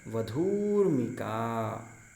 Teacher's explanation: तो वधूधन ऊर्मिका, वधु में जो धा का है दीर्घ ऊकार है और ऊर्मिका का भी जो ऊ है वो भी दीर्घ ऊ है, तो दोनों दीर्घ ऊ के स्थान में दीर्घ ऊकार ही हो जाता है। तो शब्द बनता है वधूर्मिका।